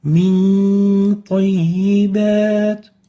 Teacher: We apply hiding for the nun and keep the ghunna for 2 units